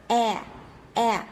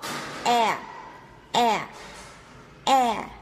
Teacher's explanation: Tại vì mình đọc cái âm đấy là âm e. E, người ta gọi là âm e bẹt trong tiếng Anh thì mình sẽ phải bẹt lưỡi xuống